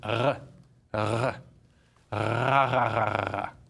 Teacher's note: There's the French R, which is pronounced just behind the K. · That's behind. That's basically your tongue vibrating against the uvula, that little hangy downy thing.